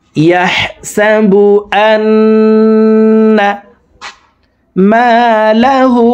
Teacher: তো দেখুন, হরকতের বামে নুনের উপরে তাসদিদ আছে, এই কারণে এই জবরওয়ালা হামজাটি তাসদিদওয়ালা নুনের সাথে 3 সেকেন্ড পরিমাণ গুন্নাহ করে পড়ব। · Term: ওয়াজিব গুন্নাহ